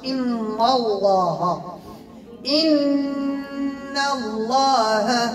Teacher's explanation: إن الله عنده علم الساعة، إن نون مشددة غنى مقدار حركتين، لام اسم الجلالة مفخمة لأنها مسبوقة بفتح. إن الله، دائما تنقول لكم الهاء ديال اللام ديال الله اسم الجلال خاصها تكون مرققة، لأن الهاء دائما مرققة.